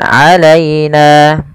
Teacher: lembutkan pada lafal ya yang didahului dengan fathah karena ia bacaan lin